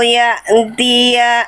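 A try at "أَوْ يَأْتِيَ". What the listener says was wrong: Nah, jangan ya antia. Au ya tia, jangan au ya antia. Iya, jangan ada suara tambahan lagi. Setelah hamzah sukun langsung ta. Au ya tia. Jangan ada suara tambahan setelah hamzah sukun. Au ya tia. Jangan au ya tia. Jangan. Ada suara tambahan yang harusnya nggak ada.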